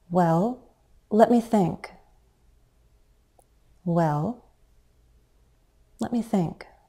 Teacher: many speakers use a fall rise on the word well